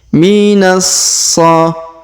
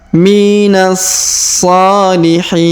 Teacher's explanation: Perhatikan minas huruf na langsung ke huruf so berharokat tasdid ya. Minas so. Kemudian huruf so kita panjangkan setelah kita tahan dan kita tekan.